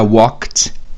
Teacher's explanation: esse K é não vozeado, então vira walked